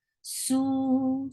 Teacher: For su is 2 counts long, and circle your lips.